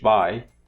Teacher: In a falling diphthong, like in English, by, the part that is non-syllabic comes last.